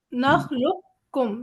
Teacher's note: ہم قاف جو ہمارا ہے اس کے اوپر جزمہ سے نہیں پڑھ رہے، ہم ڈائریکٹ اسے کاف سے ملا رہے ہیں